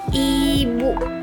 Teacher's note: I diucapkan dengan mulut sedikit terbuka dan lidah berada di bagian depan atas mulut